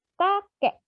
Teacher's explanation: Contoh yang plosifnya menghilang ada Batak, lalu pada kakek beralih menjadi glottal stop.